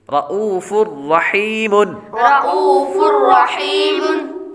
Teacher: آگے فا پر تنوین ہے، تنوین کے بعد را حروف یرملون میں سے آ رہا ہے اس لیے غنہ نہیں کریں گے · حمزہ کے بعد واو، تو واو ساکن ہے، یہ واو حروف مدہ ہے اس لیے اس کو ایک الف یعنی 2 حرکات کے برابر لمبا کریں گے